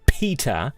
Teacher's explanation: a gush of air comes out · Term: plosive